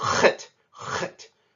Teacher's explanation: That little dot underneath of it means that we will pronounce this with that clearing sound in the back of your throat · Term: guttural letter